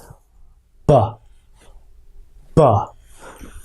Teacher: they're gonna have a hard time with the B but it's putting your lips together like this but letting the air pass between your lips real quick and using your voice so without the voice it sounds like this with the voice